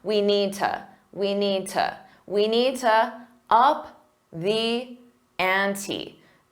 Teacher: To is commonly reduced to just a ta.